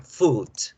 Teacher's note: la palabra comida se escribe casi igual, FWD, y su pronunciación es con la U larga, food